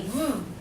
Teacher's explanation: Now, when we make the V sound, we say V. Bite your lower lip and say V. Is there vibration? Yes. That's a voiced consonant.